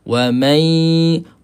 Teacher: Daripada huruf mim terus pergi kepada huruf ya, kemudian suara naikkan ke hidung. Wa may. So kita kena penyekkan sikit. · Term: idgham ma'al ghunnah